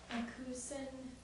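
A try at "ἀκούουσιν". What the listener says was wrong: Put your emphasis at the right syllable. Ekosin, that's where the emphasis is on the first.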